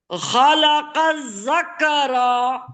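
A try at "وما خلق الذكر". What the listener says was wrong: ذكر नहीं, ذكر। खींचना नहीं है, खींच क्यों रही है, जबर जेर पेश को खींचते थोड़ी है। किसी को भी नहीं खींची, इधर खींचने वाला कुछ है ही नहीं। वमा खलक ذكر। ذكر नहीं, एक तो खींच रही है, रो को मत खींचिए।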